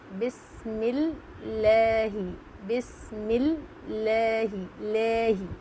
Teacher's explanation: रहमान रहीम लाह हुला हुल लाह फिर जेर की मिसाल है लफ अल्लाह के लाम से पहले जेर होगा तो लफ अल्लाह के लाम को बारीक पढ़ेंगे